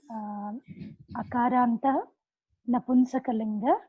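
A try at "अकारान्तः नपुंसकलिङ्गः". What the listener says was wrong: to say with visarga, you cannot drop the visarga. Akarantaha, you have to say. Akaranta is wrong. Napumsakalingaha, you have to say.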